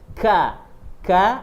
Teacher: pangkal lidah itu menyentuh langit-langit bagian yang keras. K. Ka ada hamznya ka. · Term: huruf kaf